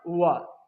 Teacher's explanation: दांत और ओठ से बोला जाने वाला वर्ण